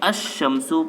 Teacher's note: اب نمبر 11، جب ایسے لفظ پر الف لام داخل ہو جس کا پہلا حرف شمسی ہو تو الف لام کے لام کو حرف شمسی میں مدغم کر کے پڑھیں گے، یعنی لام کا تلفظ نہیں کریں گے